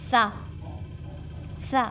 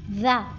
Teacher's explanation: सा में हवा बाहर आती है, ज़ाल में आवाज़ जारी रहती है, यानी वाइब्रेशन होता है